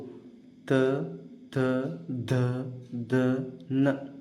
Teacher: ಹಲ್ಲುಗಳಲ್ಲಿ ಉತ್ಪತ್ತಿಯಾಗುವ ಅಕ್ಷರಗಳಿಗೆ ದಂತ್ಯಕ್ಷರ ಅಂತ ಕರೀತೀವಿ